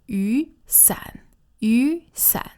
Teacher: that's two third tones, but when they're together, the first one sounds like a second tone